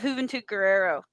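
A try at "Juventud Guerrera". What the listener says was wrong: Hey, the Juice Guerrera with an A. You said Guerrero.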